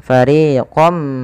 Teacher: dan kemudian ketika fariinkum ini tidak dibaca dengan fariqon minkum tapi suara tanwinnya awalnya fariqon ketemu mim masukkan fariqom ya sembari kita tahan suara mimnya Dan inilah yang dinamakan dengan Idam bunah idgham itu artinya memasukkan